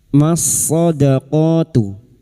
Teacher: lam ta'rif yang bertemu dengan huruf sad atau ciri-ciri lam ta'rif yang tidak bersukun idgham syamsiah masuk pada huruf sad.